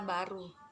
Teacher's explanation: Ciri-cirinya hidup, oral, bilabial, dan plosif.